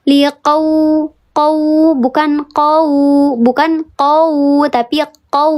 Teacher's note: Bukan huruf u, tapi di sini jadinya huruf w. Ya, liqau dikeraskan bibirnya.